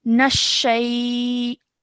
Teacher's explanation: Okay, just to point out over here, when you're joining the noon to the sheen has a shadda on it. So joining the noon to the sheen with force. Nashay, like that.